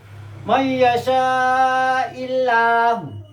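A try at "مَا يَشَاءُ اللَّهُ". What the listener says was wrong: Mayyasha'illahu, hati-hati, sana panjang dibaca pendek.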